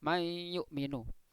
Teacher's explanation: nun ketemu ya, memasukkan sambil dengung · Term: idgham bi gunnah